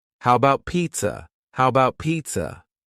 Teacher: The first a in the word about is gone. It's just missing.